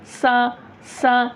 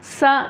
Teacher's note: नोक जब टच नहीं होती तो दोनों दांत मिल जाते हैं दोनों दात मिल गए तो सीटी की आवाज ऑटोमेटिक आ जाती है